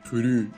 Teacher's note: Н носовой. Н никогда не слышится.